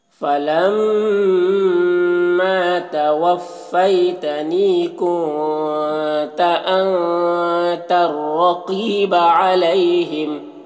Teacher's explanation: نی میں یا مدہ ہے، اسے ایک الف کے برابر کھینچیں گے۔ کنتو کے نون میں اخفا ہو رہا، نون کی آواز کو ناک میں چھپا کر پڑھیں گے۔ انتا کے نون میں بھی اخفا ہو رہا، نون کی آواز کو ناک میں چھپا کر پڑھیں گے۔